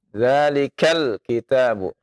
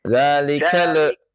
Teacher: ketika lam dibaca jangan dilepas ya ditahan zalikal kitabu tidak zalikal ya.